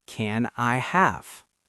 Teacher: the N in can connects to the I.